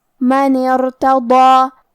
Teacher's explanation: ہم ضاد کو اور مد الف کو دونوں کو بھاری آواز میں پڑھیں گے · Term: حروف تفخیم